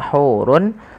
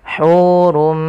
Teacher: Asalnya hurun bertemu dengan mim, tanwinnya masuk kepada huruf mim dan diganti bunyinya menjadi bunyi mim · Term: idgham bi gunnah